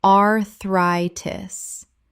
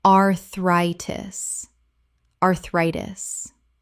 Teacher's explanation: The stress falls on the second syllable. Thri sounds like the word try.